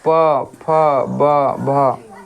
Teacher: जैसे ऊ बोले से लग रहा है कि ओठे के सहायता से बोलल जा रहा है, दोनों सट रहा है। ऊ प फ ब भ, ओठ के सहायता से बोल रहे हैं, ओठ दोनों सट रहा है बोले से। बोलिए प फ ब भ ऊ दोनों सट रहा है। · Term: ओष्ठ